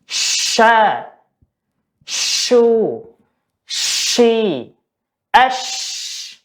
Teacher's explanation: keluarnya huruf shin ini disertai dengan angin yang menyebar di atas lidah. Jadi ketika kita mengucapkan huruf sh, ada angin ya keluar dari atas lidah.